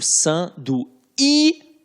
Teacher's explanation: E sanduíche não fica nasalizado, eu digo sanduíche